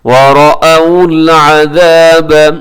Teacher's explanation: یہاں پہ جو را ہے وہ بھی موٹا پڑا جائے گا